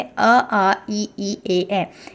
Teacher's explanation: या गोलाकार नहीं होता जैसे अ आ इ इ ए ए इसमें जो आपके होठ हैं वो वृत मतलब कि गोलाकार नहीं हो रहे हैं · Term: अव्रत मुखी